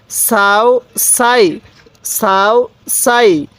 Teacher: সিনের আওয়াজটা একটু চিকন করে উচ্চারণ করব · স্মরণ রাখবেন সিনের উচ্চারণটা অনেকটাই চিকন আকারে হবে